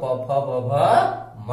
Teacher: इन सब का उच्चारण स्थान ओठ होता है, जिसको ओष्ठ बोला जाता है। ओष्ठीय वर्ण इसको कहा जाता है।